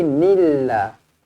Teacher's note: lafzul jalalah dibaca dengan nipis kerana huruf sebelumnya berbaris bawah